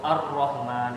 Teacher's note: Jadi huruf lamnya itu disimpangkan ke huruf ro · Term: inhiraf